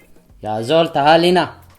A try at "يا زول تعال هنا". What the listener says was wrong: Yep, there you go.